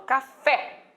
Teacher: a tônica eu jogo lá no final